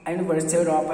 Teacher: o U e o E, aqui tem som de Y, que em inglês é considerado consoante